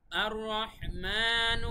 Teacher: মিমের উপরে খাড়া জবর আছে তাই এক আলিফ টান